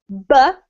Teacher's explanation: we must put our lips together, B. We have a sound coming out of our throat, so it's vocalized, but we also release quite a bit of air. So it is a very strong B sound, okay?